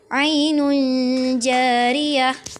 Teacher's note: Tanwin bertemu dengan jim, ainun jariyah, terjadi dengung. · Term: ikhfa